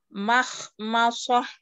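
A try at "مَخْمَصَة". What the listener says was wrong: Ma. Mimnya yang ketika mim ketemu shot ya, mimnya ketebalan. Makhmasah.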